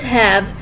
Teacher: It is a glottal fricative. It is unvoiced as it is produced without vibration of vocal cords. It is termed as a voiceless vowel with slight friction in the glottis.